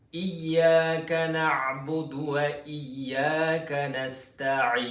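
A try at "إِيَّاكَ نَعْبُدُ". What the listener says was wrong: jangan budu sangat dia bunyi macam besar sangat.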